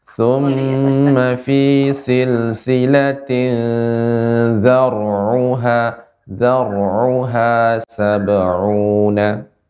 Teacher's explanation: dzar'uha tebal ra-nya.